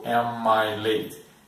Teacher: nesse caso emenda as 2 palavras e a próxima é uma vogal, então fica fácil para nós.